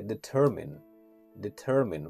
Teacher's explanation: where the stress is on the second syllable